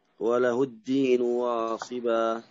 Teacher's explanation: حرف الدال، الدين مجهور، وله الدين شدة